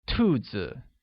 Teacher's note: where rabbits translates to 兔 子 and is pronounced with a falling tone